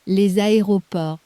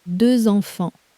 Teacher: A little Z appeared out of nowhere, hooking the two words together. That's the liaison.